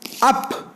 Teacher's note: This vowel does not occur finally in English. A is a central, between half open and open, unrounded vowel.